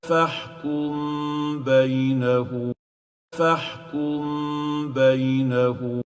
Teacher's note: فَحْكُمْ بَيْنَهُمْ ميم ساكنة followed still Meem followed by a Ba متحركة, Ba with fatha, in 2 words. And the Tajweed rule will be on hiding the Meem Sakinah and keeping its ghunnah for 2 units